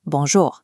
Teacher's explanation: The most effective input is an instant flat Quebecois bonjour. Keep the second syllable short and clipped.